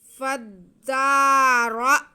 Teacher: उसके बाद हमज़ा आ रहा है जो कि साकिन है, तो रा को हम पुर पढ़ते हुए हमज़ा के साथ मिलाएंगे और हमज़ा को झटका लगाएंगे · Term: रॉ पुर